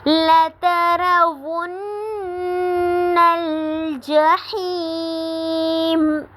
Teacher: لَتَرَوُنَّ الْجَحِيمَ، لَتَرَوُنَّ پہ نون مشدد ہے تو یہاں پہ غنہ ہوگا، اور جحیم پہ یا مدہ ہوگی کیونکہ یہاں پہ یا ساکن سے پہلے زیر آ رہی ہے